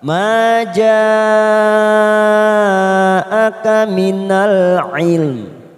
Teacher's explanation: mat wajib mutasil 4 atau 5 harokat kita panjangkan